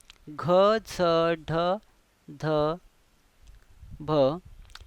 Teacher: ग अधिक ह घ ज अधिक झ ड अधिक ह ढ द अधिक ह ध ब अधिक व ह हे पाच वर्ण हे पाच वर्ण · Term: महाप्राण